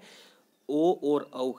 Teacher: कंठोष्ठ्य जो ध्वनियाँ है वह कहाँ से उच्चारित होती है दोस्तों? कंठ और होठ दोनों जगह से उच्चारित होती है।